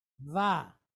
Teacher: It's a V sound, and it's pointed with kamatz, long duration A, va.